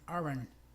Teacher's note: Y en la segunda contracción, aren't, la T en realidad no se pronuncia, se dice más bien aren't.